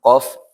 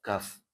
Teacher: Jadi qof juga sama ee sama-sama pangkal lidah. Cuma kalau yang kaf agak ke atas sedikit. Agak ke ke atas sedikit.